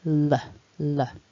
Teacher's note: moving the tongue forward when you make that L. It kind of brushes the top teeth. Don't curl it backwards because then you risk making the R, the R sound instead.